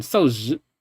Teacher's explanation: you have a very prominent rise on the second syllable